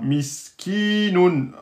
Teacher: Il y a un ya qui est donc une voyelle longue, étant donné que c'est la prolongation de la kasra. Mais on ne met pas le soukoun, mais il est sous-entendu.